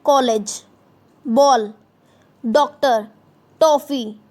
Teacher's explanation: यह अंग्रेजी तथा अन्य यूरोपीय भाषाओं से आई ध्वनि है। इसका उच्चारण अ तथा ओ के बीच का होता है। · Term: अर्धचंद्र